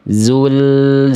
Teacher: Bukan zul zilati. Tidak boleh terputus tapi dialirkan sedikit sampai ke zainya. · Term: lam sukun